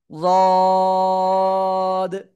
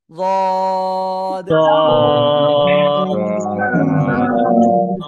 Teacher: জিহ্বার গোড়ার কিনারা উপরে মাড়ির দাঁতের গোড়ার সাথে লাগাবেন, লাগিয়ে 3 আলিফ টেনে উচ্চারণ করবেন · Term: দদ অক্ষর